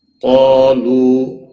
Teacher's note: قاف اور الف دونوں موٹے پڑے جائیں گے